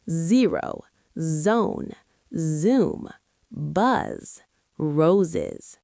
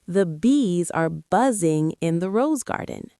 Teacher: The Z sound is voiced. That means your throat vibrates. Put your hand on your throat and feel it.